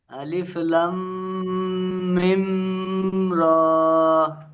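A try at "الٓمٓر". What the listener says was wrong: ঠিক আছে, কিন্তু আরো টান দিতে হবে প্রথমে একটা আলিফ লাম মিম র।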